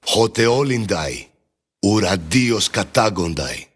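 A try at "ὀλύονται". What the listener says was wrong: And of course, the upsilon is wrong too. It just makes it an E sound.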